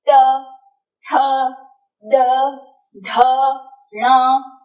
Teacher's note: ये सभी में आपके टंग और मूर्धा को टच करने वाली पैटर्न एकदम सेम थी · तो ये पांच व्यंजन का उच्चारण स्थान है मूर्धा। · तो मुख में मुरधन्य में आपकी टंग स्ट्राइक होकर आएगी और आवाज यानी कि साउंड वहां से इमर्ज होगा।